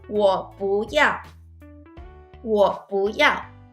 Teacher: when you put two fourth tones together, usually the first syllable will change to the second tone.